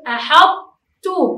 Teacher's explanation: تبقى في هذه الحالة صفة التفخيم في الطاء المضغمة في التاء، وهنا الإضغام يكون ناقص لذهاب الحرف وبقى صفته في حرف الطاء إذا جاء بعده تاء، ولذلك نقول أحطتُ.